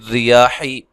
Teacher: اچھا جی، پھر ریاح را کو باریک پڑھنا ہے، یا مد اصلی ہے. حا کو لمبا نہیں کرنا.